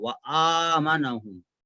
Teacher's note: واو کے بعد حمزہ کھڑا زبر وآمنہم، عین کی آواز نہیں آنا اس میں، وآمنہم نہیں بولیں گے، وآمنہم، اور دونوں میں فرق ہے، آمنہم نہیں بولیں گے، ٹھیک ہے۔